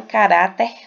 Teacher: caráter será acentuada porque a sílaba mais forte é a penúltima